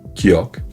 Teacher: le son de base entre G et K · Ce sont des sons produits tout au fond de la bouche, là où la langue remonte vers le palais.